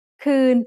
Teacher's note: Co is midtone because it has a low class consonant and a live ending